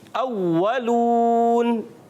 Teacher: اولون میں واو پر تشدید ہے، ذرا تھوڑا سا رک کر ادا کریں گے